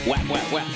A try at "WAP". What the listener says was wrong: WAP. Guys, pronounce the A, otherwise it's a slur.